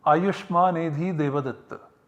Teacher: the word Devadatta is prolated, is uttered as Pluta. That's why there is number 3 written after the final vowel, and to mark that this is a pluta.